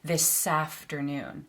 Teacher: We link the S and the A sounds